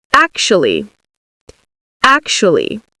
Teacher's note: The first part, ac, so the AC actually has a K sound, and it's the part we say louder and longer. It's the stress, ac. The second part, even though it's spelled with a TU, is pronounced like an SHU.